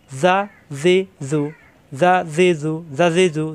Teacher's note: নরম করে উচ্চারণ, জিব্বার আগা দাঁতের আগায়, কিন্তু কোনো টান নেই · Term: জাল